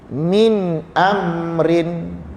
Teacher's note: Nun yang mati itu kita sebut dengan jelas, tidak ada dengung. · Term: izhar nun